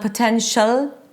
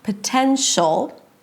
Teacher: It's not potential, very light L, just produced with the tip of the tongue touching the upper palate. No, you have to engage the back of the tongue to create that really dark ol sound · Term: dark L